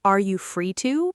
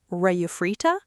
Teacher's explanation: Notice how fast are you free to becomes are you free ta?